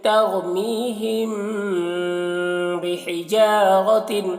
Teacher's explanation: تر میں را کو پور پڑھ رہے ہیں اور میم میں اخفاء شفوی ہو رہا ہے اور را کو پور پڑھ رہے ہیں.